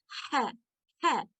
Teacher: है ये हलक के दरमियानी हिस्से से अदा होता है और इसकी आवाज थोड़ी रगड़ के साथ इसकी आवाज आती है